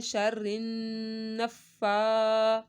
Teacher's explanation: फा को 2 दफ़ा पढ़ा और खड़ा मादा एक अलिफ के बराबर खींचना है।